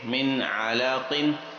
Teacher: Next, میم نون زیر من، عین زبر آ، من آ، لام زبر لا، من علا، قاف دو زیر کن، من علاقن۔ یہاں پر بھی نون ساکن کے بعد حلقیہ لیٹر میں سے عین ہے، اس وجہ سے اظہار